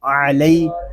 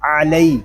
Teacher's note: عین حلق کے درمیان والے حصے سے ادا ہوگا، جب عین کو ادا کریں گے تو حلق ہمارا تھوڑا سا گھومے گا